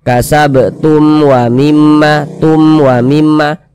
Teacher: Baca jelas, tak berdengung. Jadi baca pendek saja. · Jangan dibaca tum, jangan dipanjangkan begitu, jangan, pendek saja. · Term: izhar syafawi